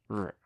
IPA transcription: ʐ